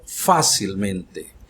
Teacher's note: O acento do fá continua aí e ela se torna só que a sílaba já não é a sílaba de uma palavra grave, é a sílaba de uma palavra sobresdrújula.